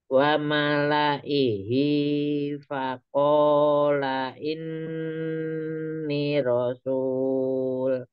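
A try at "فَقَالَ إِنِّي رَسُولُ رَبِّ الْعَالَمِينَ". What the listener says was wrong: Ah, ininya dua har dipanjangkan dulu dua harokat. Faqala inni rasulu rabbil alamin.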